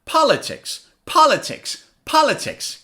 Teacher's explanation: on the first syllable I say it louder